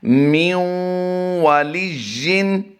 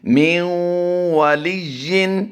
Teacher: یہاں پر ہم نون ساکن میں ادغام مع الغنہ کریں گے